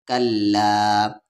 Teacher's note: مد کے سمبل کے بعد حمزہ ہے، 3 سے 4 الف کے برابر کھینچیں گے اس لا کو